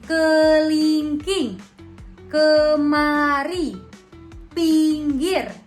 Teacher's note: vokal I tinggi bawah depan dengan kondisi bibir semi tertutup. Kata yang dihasilkan seperti kelingking, kemari, pinggir.